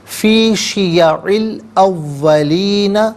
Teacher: ارسلنا من قبلک، من قبلک فی شیعی او الاولین، شیعی میں عین کے نیچے زیر ہے، اس سے الاولین کے لام ساکن کے ساتھ ملائیں گے، درمیان میں سے الف یعنی حمزہ کو حذف کیا جائے گا، اس سے ہم پڑھیں گے فی شیع الاولین، یہاں وقف کریں گے تو فی شیع الاولین پڑھا جائے گا۔